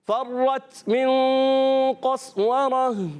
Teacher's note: گول تا کو ہا سے بدل دیں گے. وقف بالابدال مال ہا.